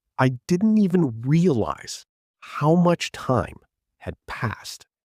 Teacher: Notice where naturally puts the stress. Realize, time, passed. Those carry the meaning. The other words sort of glide between them.